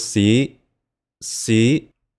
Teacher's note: Hear that rising tone? That was the high rising tone. We need a highlighter H at the end here.